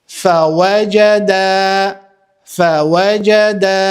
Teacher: siç e shihni zgjasit vetëm elifi që është pra në fund të fjalës